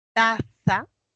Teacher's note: ese fonema consonántico oclusivo dental sordo. Luego tenemos la vocal baja central abierta, tenemos la interdental fricativa sorda, vocal baja abierta, ¿no?